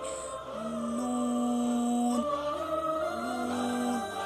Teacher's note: آخر سے زبان کی نوک تک کا حصہ جب اگلے 2 دانتوں کے مسوڑوں سے لگے، نون۔ یاد رکھیے نون پہ آپ کے ہونٹ گول ہونے چاہیے۔